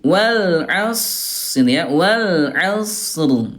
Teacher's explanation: Ini huruf shadnya alirkan dulu. Dia kan punya sifat rakhawah, lemah. Suaranya alirkan dulu.